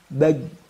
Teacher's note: ini adalah lidah kita ya maka tengah-tengah lidah di sini ya bukan pangkal bukan Ujung tapi tengah-tengah dengan langit-langit di atasnya kita tempelkan maka keluarlah huruf Jim